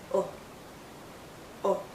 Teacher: is a short vow sound it's also more a relaxed sound our lips are still rounded but it's not a tight Circle it's a relaxed Circle